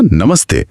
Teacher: अगर विसर्ग के बाद त जैसा दंत्य वर्ण हो तो विसर्ग भी दंत्य स बन जाता है।